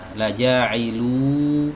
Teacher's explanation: Wawu maddiyah itu artinya wawu yang memanjangkan bacaan ya, memanjangkan dhammah yang terletak sebelumnya. Jadi dhammah di sini, dhammahnya satu harokat ditambah wawu ini jadi dua harokat.